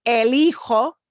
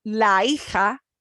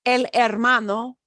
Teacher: notice with these words that start with H, we don't pronounce the H. The H is silent.